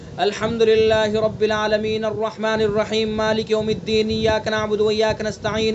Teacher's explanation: کلمے کا جو آخری حرف ہے عام طور سے اس کو ساکن کر رہے ہیں لیکن وہاں پر ٹھہر نہیں رہے ہیں